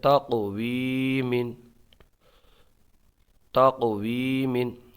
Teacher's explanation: یا مدہ کو ایک الف کھینچ کے پڑھیں گے